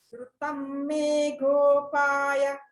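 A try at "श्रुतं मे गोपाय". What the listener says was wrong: Good. Okay, good.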